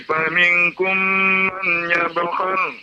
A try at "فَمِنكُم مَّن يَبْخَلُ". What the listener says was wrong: Faminkum mai, bukan man. Mai ada idgham namanya Pak, idgham.